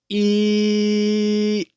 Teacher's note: Although one was longer and one was shorter, those were both the long e sound.